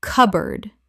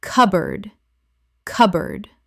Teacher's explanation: cupboard Correct pronunciation. cupboard Two syllables in natural speech. The P is almost silent and board becomes erd.